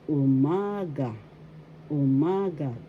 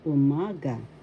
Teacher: The second syllable has the accent umaga.